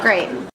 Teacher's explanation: Percebam que ela não enfatiza o T no final da palavra.